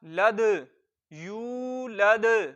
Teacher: दाल साकिन है, हरूफे कलकला में से है, तो कलकला खूब जाहिर होगा, यानी आवाज लौट कर निकलेगी।